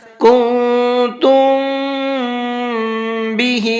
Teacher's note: میم ساکن کے بعد میں با آتا ہے تو وہاں اخفا اور غنہ دونوں چیزوں کو ایک ساتھ کرتے ہیں۔